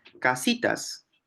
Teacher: casitas cuál encontramos que hace que la descartemos la k Porque esa K no es una alveolar es una velar o sea se produce en el velo